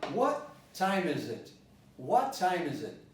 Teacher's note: I didn't pronounce the H. I could have pronounced the H. I could have said, what time is it?